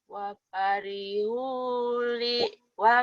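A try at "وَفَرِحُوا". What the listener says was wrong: Nggak ada yang panjang. Wa farihu.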